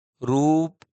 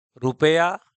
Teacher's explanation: रूप में उ अधिक ध्वनि तो हो रहा है और रुपया में उ कम ध्वनित हो रहा है तो रुपया में जो उ लगेगा वह छोटा उ होगा और